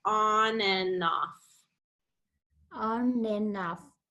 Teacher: that N on each side kind of helps us connect it